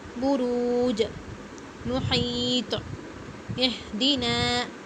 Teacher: قلقلہ کا مطلب کیا ہے، ڈبل ساؤنڈ آتا ہے، آواز باؤنس ہوتی ہے